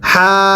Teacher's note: হায়ের মধ্যে এক আলিফ আর বাকি হরফগুলোর মধ্যে চার আলিফ।